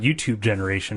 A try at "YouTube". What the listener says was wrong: No, you're saying it like Bluetooth.